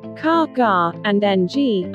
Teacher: Velars, ka, ga, and ng are produced when you raise the back of the tongue to the soft palate of velum. Uvulas, ra, qua, this is produced when you raise the back of your tongue to the uvula.